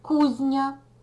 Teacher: тут відбувається уподібнення за м'якістю м'який ні впливає на зі і він уподібнюється за м'якістю стає м'яким